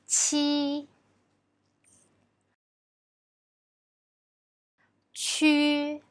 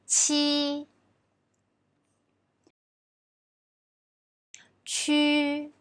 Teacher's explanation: So when we pronounce ch, the tongue position is the same as when pronouncing j, but it brings out a strong airflow